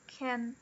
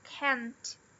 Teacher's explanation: Já o can't, ele é falado com o é, com o som é mesmo, e ele é stressed.